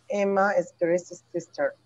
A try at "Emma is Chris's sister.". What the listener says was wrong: All right, nice.